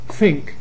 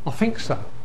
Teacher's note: Very typical London. What happens is that th changes to f